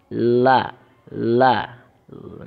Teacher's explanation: Dua tepi lidah paling luar sampai permulaan ujung lidah. Secara bersamaan dengan pangkal dua gigi seri yang atas. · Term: huruf lam